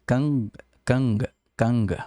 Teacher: se tiver NG, esse G ele não é tão pronunciado, ele fica como se fosse uma palavra no português. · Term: G morrendo depois do N